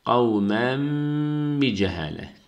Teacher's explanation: temindeki nun harfini mime çeviriyoruz.